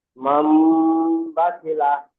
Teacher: নুনকে মিমের দ্বারাই পরিবর্তন করে এক আলিফ পরিমাণ গুণনা করে পড়তে হয়। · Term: ইকলাব